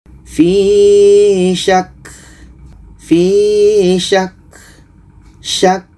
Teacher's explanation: Ka tasydid ketika dia dimatikan adalah sifatnya salah satunya hamas. Ada angin yang keluar.